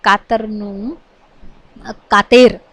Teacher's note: માન્ય ગુજરાતીમાં ત્યાં અ ની જગ્યાએ એ થઈ જાય છે